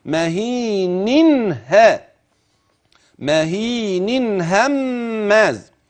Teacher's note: تشير الى اظهار نون التنوين لملاقاه الهاء بعدها